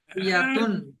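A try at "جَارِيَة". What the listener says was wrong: জারিয়াতুন হবে না, এখানে গোল তাকে হা হয়ে যাবে।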